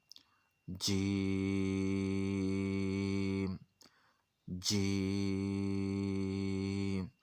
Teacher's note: एक जैसी आवाज़ आ रही है, ये नहीं हो रहा कि पहले आवाज़ जो है ना वो आहिस्ता शुरू की और फिर बाद में ऊंचे सुर में चले गए, इस तरह नहीं हो रहा।